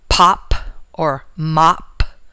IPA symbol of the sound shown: p